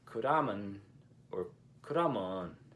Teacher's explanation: In Busan, the myeon ending is typically pronounced mun